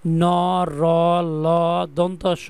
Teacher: দন্তমূলীয় বলতে দাঁতের গড়া অর্থাৎ উপরের মাড়ির দাঁতের গড়া থেকে এগুলো উচ্চারণ হবে। যেমন ন র ল দন্তস প্রত্যেকটাই মারিতে চলে যাবে।